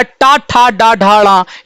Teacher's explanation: टा वर्ग का उच्चारण मूर्धा से होता है। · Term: मूर्धन्य ध्वनियां